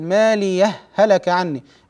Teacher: والوجه الثاني هو الادغام نقول ماليه هلك عني بهاء واحده مشدده